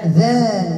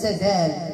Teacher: الذات تخرج من طرف اللسان مع اطراف الثنايا العليا، بينما الدال المهمله تخرج من طرف اللسان مع اصول الثنايا العليا